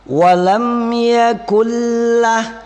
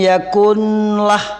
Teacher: Huruf la ini adalah hurufnya idgham bila gunnah. Jadi cukup nun dimasukkan ke dalam la.